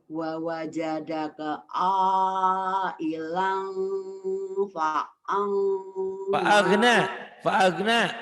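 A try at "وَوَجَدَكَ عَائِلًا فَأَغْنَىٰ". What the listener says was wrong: Fa'agna. Bukan fa'angna, fa'agna itu gin. Wa wajadaka ailan fa'agna.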